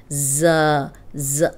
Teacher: یہ سیٹی والا حرف ہے، اس میں سیٹی کی آواز آئے گی